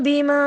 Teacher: بما کے اوپر باریک مت پڑی ہوئی تھی، چھوٹی مت کہتے ہیں اسے، اس لیے ہم نے اسے 1.5 انگلی کے برابر لمبا کیا